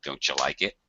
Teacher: in reality i would actually even reduce the you to ya